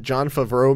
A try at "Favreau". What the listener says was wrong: That was an interesting syllabic emphasis there. John Favreau. Favreau. Put emphasis on the wrong syllable.